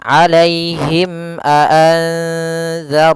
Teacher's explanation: suara mimnya harus jelas dan tidak boleh ditahan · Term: izhar syafawi